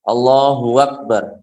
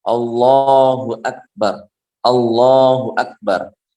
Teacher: Kemudian yang kalau seandainya digabungkan dengan akbar misalnya, itu jangan menambahkan huruf antara kedua kata tersebut. Jangan menambahkan wawu antara hak dengan alif.